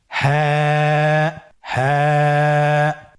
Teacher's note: হাফটি উচ্চারণের স্থান কন্ঠনালীর শুরু হতে · হাফটি উচ্চারণ ক্ষেত্রে অবশ্যই বারিক হবে এবং এক আলিফ টেনে পড়তে হবে।